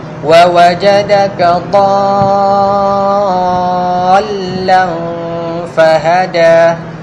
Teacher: dah dal tu jangan terlalu lama, hanya sekadar menunjukkan kat situ ada tasydid